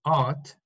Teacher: British English is not rhotic, okay? It's not rhotic, so the R is not pronounced. So what we should have, just in British English, should be art, no R, because in the British pronunciation, when we have a vowel in R is not pronounced, because it's British, is not rhotic.